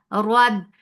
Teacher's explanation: Ra is heavy whenever ra has fatha or dhamma. It is heavy here.